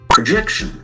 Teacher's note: the accent falls on the second syllable